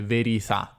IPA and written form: veriθà (verità)